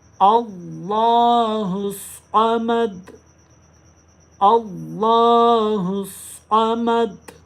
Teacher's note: स्वाद को भी मोटी आवाज़ में पढ़ें, सीटी की आवाज़ भी आनी चाहिए और साथ में मोटी आवाज़ भी करें।